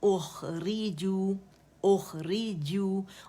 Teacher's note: زبان کا درمیانی حصہ اوپر جائے گا، اسے گول کریں گے کیونکہ جیم پہ ضمہ ہے اور مد اصلی بن رہا ہے.